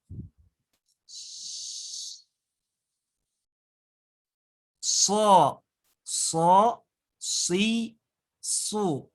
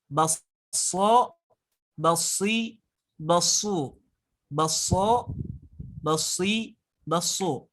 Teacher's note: huruf so ini yang mana mempunyai sifatul huruf yang namanya sifat sofir. Ataupun keluarnya teh mirip suara burung. Cara pengucapannya kayak mau bersiul gitu ya, mau bersiul.